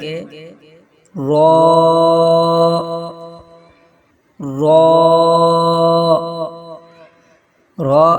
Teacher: ادا کرتے وقت زبان کا کنارہ اوپر والے مسوڑھوں سے لگے تو را ادا ہوتا ہے